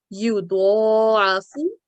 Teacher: the second letter is dod, and that's carrying vertical fatha over it. So we're going to stretch it or prolong it to 2 counts. And then again, we've got ain and fa, and they have short stretches.